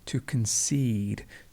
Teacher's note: To concede, the stress moves to the end.